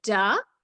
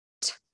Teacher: It's the same movement without moving your vocal cords. So it's basically just whispering the letters.